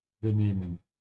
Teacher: the emphasis is on the second part of the verb